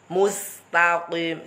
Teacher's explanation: Sinnya meringis, qafnya mencucut dulu baru meringis. Karena qaf juga termasuk huruf istilah, huruf tebal.